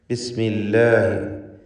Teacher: ഇവിടെ അള്ളാഹ് എന്ന ഇസ്മുൽ ജലാലയുടെ തൊട്ടുമുമ്പിൽ കസ്ർ വന്നതുകൊണ്ട് ലാമിനെ തർക്കീഖ് ചെയ്ത് ഉച്ചരിക്കുന്നു.